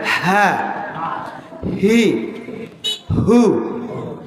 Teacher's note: উচ্চারণ করতে হবে কণ্ঠনালীর শুরু থেকে স্বাভাবিকভাবে বাতাস দিয়ে, হা হুতাসের মাধ্যমে। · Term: গোল হা